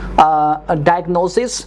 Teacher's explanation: Diagnosis, we have S sound and short I sound. Diagnosis, we have a Z sound and long I sound. In spelling and in pronunciation we have difference.